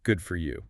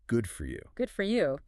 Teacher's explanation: You have to keep the tone high. Yeah. You must keep it short.